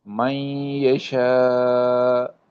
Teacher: اب نون کی آواز یا میں آ رہی ہے